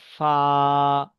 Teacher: নিচের ঠোটের ভিজে অংশ এবং সামনের উপরের দুই দাঁতের আগার সাথে লাগিয়ে উচ্চারিত হয় ফা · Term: 17 নাম্বার মাখরাজ